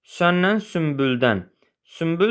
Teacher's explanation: Söz ortasında B, M samitlərindən əvvəl gələn N hərfi M kimi tələffüz olunur.